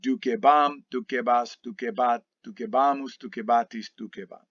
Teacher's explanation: our stem vowel is now lengthened to a long e